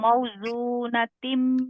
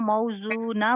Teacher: गोल ता को हमने हा साकिना में बदल दिया, तो फिर इसके बाद फिर हमें गुन्ना की जरूरत नहीं पड़ेगी। ठीक है, फिर इसको मुंह ही पढ़ा जाएगा, मतलब पेश पढ़ी जाएगी, शद जो है इसका वो इग्नोर कर दिया जाएगा।